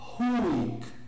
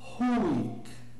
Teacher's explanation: A pronúncia mais correta seria Hick, aspirado